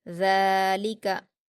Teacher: ज़ाल पर खड़ा ज़बर है, 2 हरकत खींचकर अलिफ मद्दा की तरह पढ़ेंगे, लाम पर हरकतें जल्दी पढ़ेंगे, काफ पर हरकतें जल्दी पढ़ेंगे।